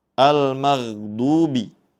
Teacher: Almagdubi huruf gin sukun membacanya dengan dialirkan. Jangan sampai dibaca memantul ghairil magdubi.